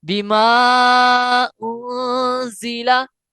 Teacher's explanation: نون ساکن کا قاعدہ اپلائی ہوگا, اور یہاں اخفا کرنا ہے, یعنی غنہ کر کے پڑھنا ہے